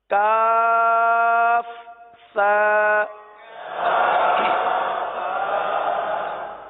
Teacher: زبان کا سرا اور اوپر کے دانتوں کے اندرونی کنارے، یہاں سے سا ادا ہوتا ہے